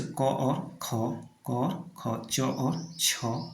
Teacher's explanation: जिन वर्णों के उच्चारण में नाद की जगह केवल श्वास का प्रयोग होता है वहाँ पे अघोष वर्ण होते हैं। तो जैसे क और ख, क और ख, च और छ, तो पहला और दूसरा को अघोष, बाकी तीसरा, चौथा, पांचवा क्या है, सघोष है।